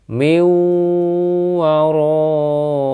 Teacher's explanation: suara nun sukun hilang melebur ke huruf wau